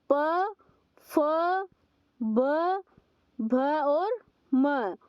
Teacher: ठीक है, प वर्ग के जो हमारा प वर्ग होता है उसका उच्चारण हम जब करते हैं तो हमारी जो दोनों होठ है वो एक दूसरे को टच करते हैं। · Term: ओष्ठ्य